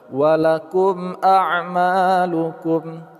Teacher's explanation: mim mati bertemu dengan alif izhar syafawi, kita baca secara jelas, ma, panjang dua harakat.